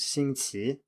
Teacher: the standard pronunciation is 星 期 with a rising tone on the second syllable